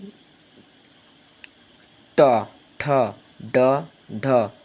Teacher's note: মূর্ধন্য ব্যঞ্জনের ক্ষেত্রে আসতেছে আপনার জীভের ডগা এবং দন্ত মূলের পিছনের অংশ মূর্ধা মানে আপনার এখানে আসবে ট ঠ ড ঢ ট ঠ